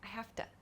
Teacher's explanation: This O sound in the to is a very quick sound too.